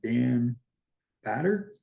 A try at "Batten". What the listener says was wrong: It's actually Batten. Instead of Batter, It's an N, yeah.